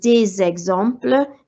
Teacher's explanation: the S becomes a Z sound again because of the vowel. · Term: liaison